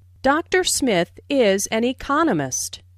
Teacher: Notice the stress on economist. This content word has new information, so it is emphasized.